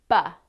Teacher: this is a voiced sound because when you feel your throat you will feel the vibration